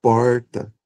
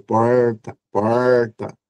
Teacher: Esse R caipira ou retroflexo, a gente chama de retroflexo porque a língua para produzir o R, ela ela ela se encolhe e toca o palato